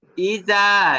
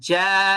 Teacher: ইজা জা إذا جاء ইজা জাল হবে চিকন, আর জিম যে হরফটা এটা হবে মোটা। জাল হবে জিব্বার আগা থেকে, আর জিম হবে জিব্বার মাঝখান থেকে।